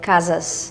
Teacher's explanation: usually when we have an S at the end, it kind of becomes a sh sound. Sh, sh.